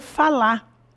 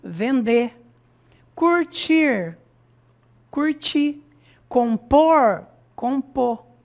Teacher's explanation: na nossa fala nós geralmente já suprimimos esse R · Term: engolimos o R